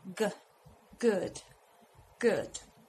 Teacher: to pronounce the G in this case we need that the back of our tongue goes up and touches the upper part of our mouth something like this gah gah we will feel a movement here